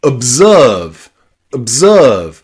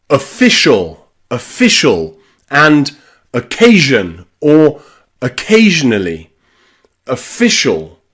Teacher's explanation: the letter O when it is not stressed, especially when it's at the beginning of words is often a schwah in English. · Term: schwa sound